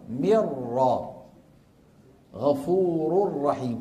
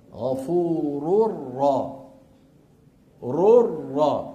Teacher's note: غفور الرحيم كيف تقرا هكذا غفور الرا ررا ما ما ما تحولت النون الى ايش الى راء وشددت الراء التي بعدها